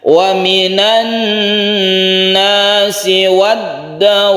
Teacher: Ada tasydid nun yang kita baca seperti gunna musyaddada panjangnya, kemudian ada tasydid dal, ini kita tekan ke dalnya wad, kemudian dawab ini kita panjangkan dulu baru tasydid. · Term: mat lazim mutawwal